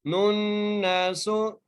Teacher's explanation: تشدید کی وجہ سے غنہ کر رہے ہیں، سین کے اوپر پیش ہے، بغیر کھینچے بغیر جھڑکا دیے پڑھ رہے ہیں۔ · نون کو نون سے غنہ کرتے ہوئے ملا رہے ہیں